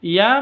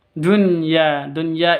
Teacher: lam syamsiyah tandanya tasdid setelah alif lam Dunya Dunya ini namanya izhar jelas tidak boleh dengung walaupun Nun bertemu dengan Ya